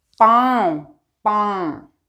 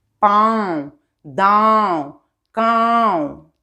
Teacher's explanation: मुंह से और नाक से की ध्वनि निकलेगी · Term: चांद बिंदु